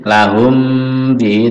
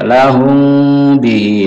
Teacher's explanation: mim sukun bertemu ba, namanya ikhfa syafawi, jadi samar, bukan tertutup M mati, lahum bi, tapi agak terbuka, condong ke ba, lahum bi.